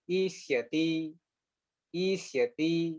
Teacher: દંત્ય સ ની જગ્યાએ મૂર્ધન્ય સ કરી નાખ્યો